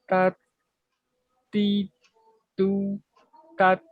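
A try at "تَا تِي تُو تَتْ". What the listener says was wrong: Hati-hati, tetap panjangnya dijaga.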